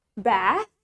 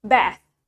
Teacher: we usually pronounce the a longer compared to the American